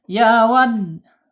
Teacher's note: Ya wad, tekan ya, ditekan, penekanan di dal karena bertasydid ya